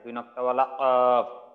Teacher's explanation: চার নাম্বার মাখরাজ জিহ্বার গোড়া তার বরাবর উপরে তালুর সঙ্গে লাগাইয়া